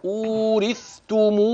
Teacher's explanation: الآية الثانية انتبه معي، وتلك الجنة، احرص على بيان اللام المظهرة من كلمة الجنة، وتلك الجنة التي أورثتموها، المد المنفصل، ومعك ما يظهر من تقارب رواية في كلمة أورثتموها، بيان الثاء من التاء جليا مع عدم السرعة عند النطق، هكذا أورثتموها بما كنتم، الإخفاء الحقيقي، كنتم تعملون.